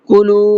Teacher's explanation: کلو کلام کو کھینچیں گے اس لیے کہ یہاں پر واو مدہ کا قاعدہ ہے، واو ساکن ہے اور اس سے پہلے پیش ہے